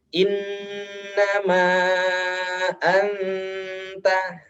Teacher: Inna dan anta dengungnya lama ya, sama.